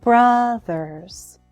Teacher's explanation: Brothers has two syllables the first one is stressed